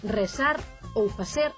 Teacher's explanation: en Cambados din rezar ou facer cun S chamado apicoalveolar